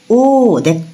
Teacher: আমাদের জীবটা পেছনের দিকে যাচ্ছে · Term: পশ্চাৎ স্বরধ্বনি